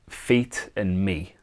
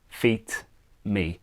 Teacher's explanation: we've taken away the T so we just left with the e sound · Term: subtractive rhyme